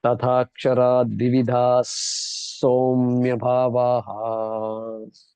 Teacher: So in this case, the visarga is followed by a somya, S. So then the visarga also gets to be pronounced as an S